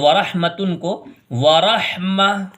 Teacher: اگر گول تا آتی ہے تو پھر اس گول تا کو ہا سے بدل کے پڑھیں گے